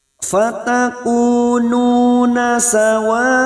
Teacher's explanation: Mat wajib mutasil kita panjangkan 4 atau 5 harokat, tetapi kita pilih salah satu, misalnya kita panjangkan 5 harokat, maka nanti jika terdapat mat wajib ataupun mat jaiz kita samakan 5 harokat kita panjangkan.